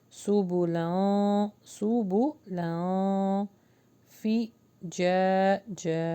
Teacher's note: منہا سبولن، یہاں پہ اخفا ہوگا وہ بھی باریک